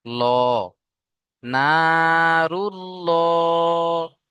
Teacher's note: আল্লাহ শব্দের লামের আগে এখানে পেশ এসছে, তাই আল্লাহ শব্দের লাম কি পুর করে মুখটা গোল করে ল পড়বো।